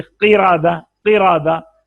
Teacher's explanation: तो इसकी तफखीम इसका पुर पढ़ना तीसरे दर्जे पर आएगा, ये सबसे कम पुर होगा